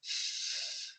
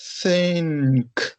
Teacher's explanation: Você pega a pontinha da língua, coloca nos dentes de cima e assopra. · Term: unvoiced